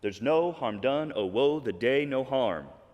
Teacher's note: And that is the perfect 5 iambic pentameter. Yeah, so we've got 5 iambs, unstressed, stressed